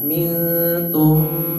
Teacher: nun mati ketemu ta itu ikhfa, dibaca samar dan didengungkan, ditahan.